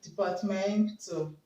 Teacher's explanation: Now the word departmentalize, now we'll remove IZE, okay? Now we have departmental, okay? So the stress will be on MEN